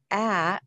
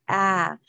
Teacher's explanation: it is very open in our mouth. It is a very wide sound and a very open sound.